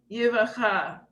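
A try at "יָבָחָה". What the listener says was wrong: What's the first vowel? Slightly different. The previous one is Yevana, but this one has three kametzim, Yavacha.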